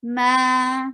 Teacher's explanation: Ma, two haraka long. Why? Because alif is followed by fatha.